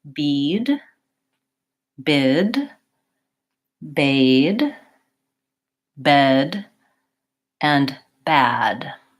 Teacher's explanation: so those are all front vowels and they get increasingly more open so bead is not very open bid is a little bit · are all front vowels and they get increasingly more open so bead is not very open bid is a little bit more open bade is moderately open bed also moderately open and then bad is the most open so I'm going from high to low for the front vowels